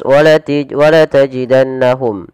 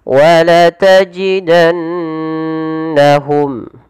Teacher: harus dibaca dengan bacaan yang kita namakan dengan gunnah, yaitu sembari menahan memasukkannya ke rongga hidung